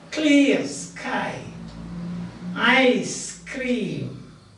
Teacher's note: There are 2 syllables, but both the syllables are stressed. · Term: spondy